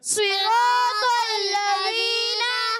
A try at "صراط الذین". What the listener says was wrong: ابھی بھی آواز ہے تل لذین, تا کو یہ طا کو تا نہیں پڑھنا, بعض طا کو تا پڑھیں, آپ نے موٹا کرنا ہے, ٹھیک ہے. صراط الذین.